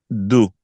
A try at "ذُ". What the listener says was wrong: This one is dod with the sound, and this one is zo with z.